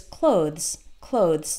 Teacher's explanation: the th is there but it's very very short and when you're listening to a native speaker you might not even hear it but try to pronounce it with the th th is an